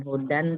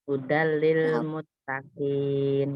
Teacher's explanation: Itu tadi bilaguna, idgham bilaguna, jadi melebur. Dia melebur ke dalam huruf lam tanpa guna.